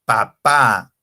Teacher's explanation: cuando pronunció papá tengo que juntar mis dos labios un sonido explosivo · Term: fonemas bilabiales, bilabial